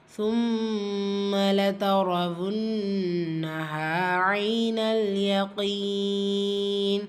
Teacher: மீம் முஷத்ததா குன்னா செஞ்சு ஓதணும்